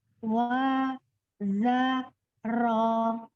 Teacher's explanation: ro-nya tidak bulat, tetap dibuka